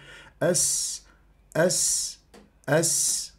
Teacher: السين من الحروف المهموسه مهموسه يجري النفس جريان النفس · السين حرف مستفل لا يرتفع اقصى اللسان عند نطق السين · السين حرف رخو يجري فيه الصوت لانه الرخاوه ضدها الشده